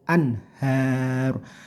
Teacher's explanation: idhar itu namanya artinya jelas, tidak boleh dengung